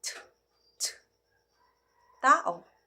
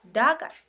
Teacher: Pangipin naman ay nangangahulugang ang dulong dila ay dumidikit sa bahagi ng mga ngipin sa itaas.